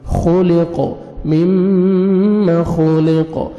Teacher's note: فلینظر الانسان مما, میم مشدد ہے, غنہ کریں گے, نوز میں ساؤنڈ لے کے جائیں گے, خوا کو موٹا کر کے پڑھیں گے, قاف کو بھی موٹا کریں گے اور قلقلہ کریں گے